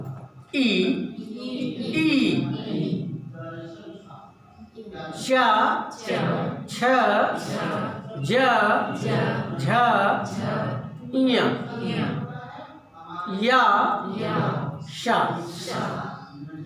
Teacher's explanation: जीभ कहाँ स्थिर हो जाएगी, शा, तालु पे स्थिर हो जा रही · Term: तालव्य वर्ण